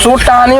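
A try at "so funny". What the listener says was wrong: আরে ভাই ওটা সব পানিও না, সো টানিও না, ওটা হবে সো ফানি। এফ তে ফানি।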